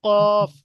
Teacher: কফের মাখরাজ তাহলে কোথায় হলো? জিভের গোড়া এবং উপরের তালুর সাথে, সেই বরাবর উপরের তালুর সাথে লাগিয়ে উচ্চারিত হয়, কফ। Number 5, কাফ।